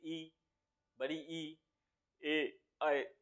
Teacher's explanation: जीभ के आगे का हिस्सा यूज हो रहा है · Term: अग्र स्वर